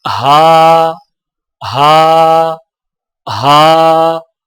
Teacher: ہا کی آواز حلق سے بغیر رگڑ کھائے نکلتی ہے، جیسے ہا، ہا، ہا۔